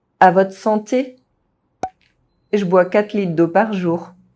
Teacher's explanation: The French R is often dropped when found in a consonant cluster and followed by E at the end of a word, as in words ending in TRE, VRE.